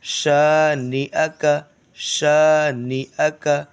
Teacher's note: شین کو کھینچیں گے، باقی یہ تینوں کو جلدی